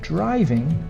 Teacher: we don't say the G very strongly